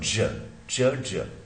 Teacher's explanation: च ज में कंप्लीट क्लोजर तो होता है मगर रिलीज स्लो होता है। तो च के लिए वॉइसलेस पैलेटो अल्वेलर अफ्रीकेट, और air stream structure involved is that of complete closure और स्लो रिलीज।